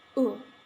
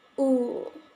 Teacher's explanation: In American English, this sound is known as short vowel. The sound is like oo, but in British English, this sound known as long vowel. The sound like oo. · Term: high back rounded vowels